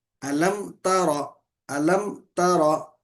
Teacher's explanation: تورا نہیں ہے، تارا، تا باریک را موٹا